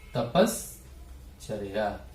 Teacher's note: दंत सकार के स्थान पर तालव्य सकार आदेश हो गया